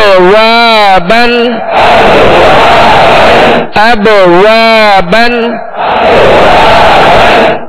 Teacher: قلقلہ کریں گے، آواز میں جنبش ہوگی